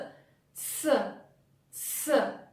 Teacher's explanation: to pronounce this sound, let's make a combination of 2 sounds T and S.